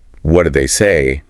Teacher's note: of the situation and when he asks what do they say the stresses on say and the question have that downward inflection we expect from what questions